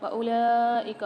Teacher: واو کو سائلنٹ کر دیں گے کیونکہ اس کے اوپر کوئی حرکت نہیں ہے